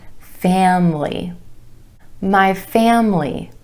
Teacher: Emphasis on the first syllable and the a vowel sound, family. My family.